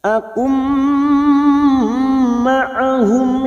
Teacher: Namanya bacaan idgham bi gunnah. Siap masuk ke huruf mim dan ditahan selama 3 harokat.